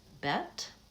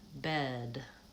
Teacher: one ends with the voiceless T and the other ends with the voiced D and you'll notice as I'm saying those words I tend to